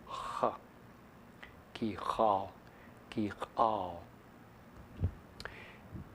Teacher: But it's written this way to keep it so that you can keep the contrast, as long as we realize that for a good number of people this is pronounced like the letter h, only farther back in the mouth.